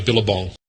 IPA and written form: ˈbɪləbɒŋ (Billabong)